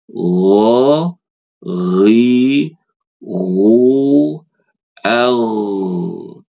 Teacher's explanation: huruf gin itu punya sifat namanya rakhawah. Dia ngalir. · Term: rokhawah